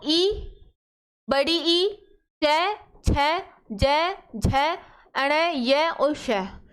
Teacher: ये ऐसे वर्ण हैं जो किससे बोले जाते हैं, तालु से बोले जाते हैं, है ना। और जो तालु से बोले जाते हैं वही अपने होते हैं तालव्य वर्ण।